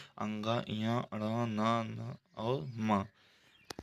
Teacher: नासिका के द्वारा 5 वर्णों का उच्चारण होता है